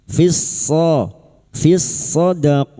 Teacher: Lam takrif yang bertemu dengan huruf shad idgham syamsiyah